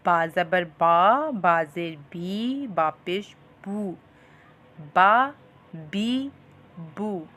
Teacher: تو اب سیکھتے ہیں حرف با کا مخرج۔ جب 2 ہونٹوں کا تر حصہ آپس میں ملے تو با ادا ہوتا ہے